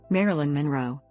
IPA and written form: ˈmærɪlɪn mənˈroʊ (Marilyn Monroe)